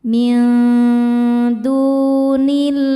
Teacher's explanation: Dengungnya sedikit ya, jadi ujung lidah kita mau disentuhkan dengan makhraj huruf dal yaitu ke pangkal gigi seri atas ya, tapi belum menyentuh. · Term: ikhfa hakiki aqrab